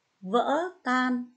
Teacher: lưu ý cho cô vần an âm cuối n ở tiếng tan và thanh ngã ở tiếng vỡ